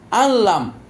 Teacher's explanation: গুন্না চলবে না ঠিক ঐরকম আল্লাম দেখেন নুন সাকিন তারপর লাম নুন সাকিন ঢুকে গেল লামে ইদগাম হয়ে গেল কিন্তু গুন্না হবে না আল্লাম এরকম হবে না আল্লাম তাড়াতাড়ি চুল যেতে হবে তো চারটাতে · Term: ঈদগাম নাকিস